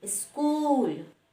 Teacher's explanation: आधा दंत स से जब शब्द की शुरुआत होती है तो उच्चारण इस हो जाता है, लेकिन लिखते समय में आधा स ही लिखते, ई नहीं लिखते हैं।